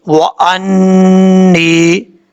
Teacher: واو زبر وا، حمزہ زبر نون، ان، حمزہ زبر نون، ان، نون زیر یا، نی، وانی. نون کے اوپر شد ہے، غنہ کریں گے 1 الف کی مقدار